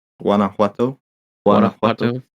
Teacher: the J's kind of Um, hit it like an H almost